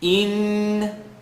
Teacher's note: Noon shadda, full nasal sound, rule 3 of rhythm.